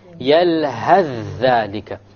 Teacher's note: You will drop the tha and move on directly.